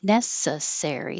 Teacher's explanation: That would be a good word for four syllable word. Stress on the first syllable.